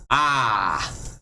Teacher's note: long a you open your mouth all of the way